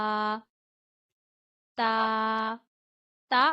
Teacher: अदा होता है जबान की नोक को ऊपर के दांतों की जड़ों पे लगा के, यानी जहां से हमारे ऊपर के दांत अंदर की तरफ उगना शुरू हो रहे हैं वहां पे आप जबान की नोक लगाते हैं और ता अदा करते हैं।